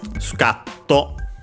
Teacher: Scatto should be accented on the ka.